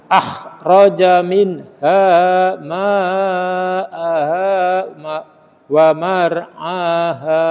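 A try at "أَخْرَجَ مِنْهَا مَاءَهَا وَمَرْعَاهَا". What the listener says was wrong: Nah, betul getar tapi juga tebal pengucapannya. Jadi mulutnya moncong, menggelembung. Nah, gitu kalau bisa nggih. Tidak sekedar getar, jadi itu huruf istilah.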